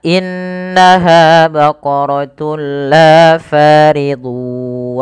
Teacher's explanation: dengan cara memasukkan tunnya kepada lam dan diganti bunyi suara nunnya menjadi suara lam. Baqaratul la, tapi tidak ditahan. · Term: idgham bila gunnah